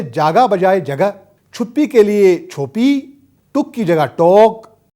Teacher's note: تطویل مصوتہ یعنی چھوٹے مصوتوں کو بڑے مصوتوں میں بدل دینا